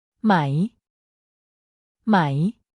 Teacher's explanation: turns statements into questions in a very natural and straightforward way it's pronounced with a rising tone meaning your voice should go up towards the end of the word